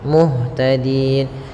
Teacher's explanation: Di sini nun asalnya muhtadina, karena dia waqaf maka nunnya menjadi sukun muhtadin, dan sebelumnya ada huruf mad, maka panjangkan dulu di-nya sepanjang boleh 2 harakat, boleh 4 harakat, dan boleh 6 harakat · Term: mad arid